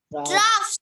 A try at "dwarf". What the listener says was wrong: Dwarf. Dwarf. Yes, R is silent. You will not pronounce the R. Okay, so it is dwarf.